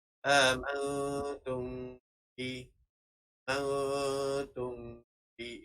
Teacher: Dinamakan dengan ifak syafawi dan bacaannya adalah secara dengung dan bibir tertutup